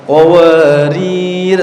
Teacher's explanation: Kalau antum berhenti di qawarirah yang kedua, maka harus disukunkan qawarir. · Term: sifat mustadir